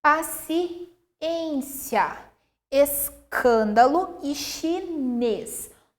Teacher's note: o circunflexo, um timbre fechado